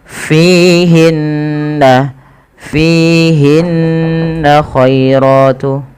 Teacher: lembutkan dalam pelafalan huruf ya-nya yang dimana didahului dengan fathah karena dia ada bacaan lin. Kemudian ratun ada mad tabi'i pada lafal ra, dan ra-nya di sini dibaca dengan tafkhim karena ra-nya dibaca berharakat fathah, maka dia dibaca dengan tebal.